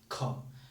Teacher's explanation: ख को बोलेंगे ना, लगेगा कि ज्यादा हवा निकली। ख, एक हवा का झोंका बेग से आया और हवा हमारे हाथ में टच किया।